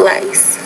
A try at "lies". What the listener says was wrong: Not pronouncing the Z with enough vibration. So lice, lies.